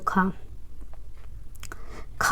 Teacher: स्पर्श व्यंजन कंठ ध्वनि अघोष एवं महाप्राण ध्वनि कौन सा है इसमें से, तो खा स्पर्श व्यंजन स्पर्श भी है, कंठ ध्वनि अघोष और महाप्राण है